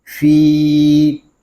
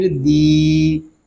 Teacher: یہاں یا مدہ ہو رہا ہے، ہم فا کو ایک الف تک کھینچ کر پڑھیں گے